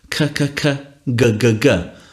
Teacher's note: it's made with the tongue you're contacting the soft palate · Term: plosives